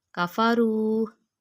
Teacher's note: ان الذین کفروا، حروف مدہ واو کی مثال، واو پہ جزم ہے اور پچھلے حرف کے اوپر پیش ہے، حروف مدہ کی تعریف آ گئی۔ 1 فنگر کے برابر لمبا کریں گے۔ کفروا، کافا جلدی پڑا کیونکہ کاف کے اوپر بھی زبر ہے اور فا کے اوپر بھی زبر ہے، یہ حرکاتیں ہیں، حرکات لمبی نہیں کی جاتی۔